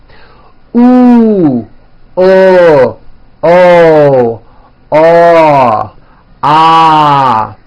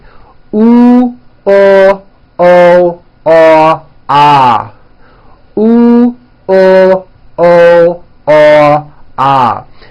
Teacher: notice how my jaw is opening on each one and also notice how my lips are coming forward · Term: back vowels